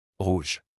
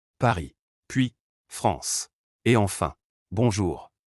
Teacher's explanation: Le R français est complètement différent. Le son se produit tout au fond de la bouche, près de la gorge. Imaginez que vous essayez doucement de vous racler la gorge, mais sans forcer. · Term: le son R